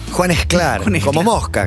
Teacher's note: Aspiramos la S antes de las consonantes oclusivas en español.